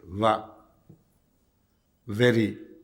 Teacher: میں دوبارہ تعویل کا لفظ اس لیے پڑھا ہے کہ عموماً ہمارے ہاں عربی واو کو اردو واو میں تبدیل کر دیا جاتا ہے. اردو واو دانتوں کے ہونٹوں سے ملنے سے پیدا ہوتی ہے